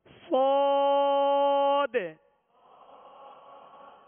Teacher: پر کریں گے اور سیٹی کی آواز بھی ہوگی